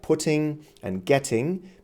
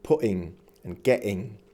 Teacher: You might also hear the glottal stop, which is very typical for speakers from England.